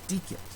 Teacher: it ends with a short e and not a long e when we attach the ending onto a short e that short e morphs into a short i